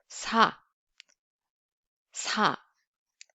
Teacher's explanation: However, there's a slight difference between English S sound and Korean S sound, where English S sound is pronounced with the tip of the tongue approaching the gum ridge But Korean, these two sounds are pronounced with the top of the tongue approaching the gum ridge, and the front part of the hard palate, and the tongue tip touching the lower teeth.